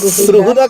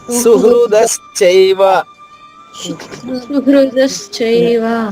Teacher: హ కి ఉండాల్సిన రుత్వాన్ని స కి తగిలిస్తున్నారు